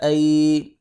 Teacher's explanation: یا لین ہے، یہاں پر لین کریں گے، تھوڑا سا کھینچ کے پڑھیں گے